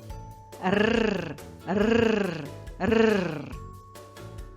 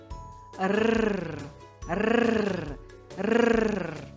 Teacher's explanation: Широкий кінчик язика піднятий до горбочків за верхніми зубами. Він вібрує, тремтить, коли ти сильно дмухаєш на нього. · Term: звук «р»